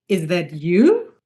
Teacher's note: So you raise the pitch at the end and say is that you? · Because you can only answer the question with yes or no. So you raise the pitch at the end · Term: intonation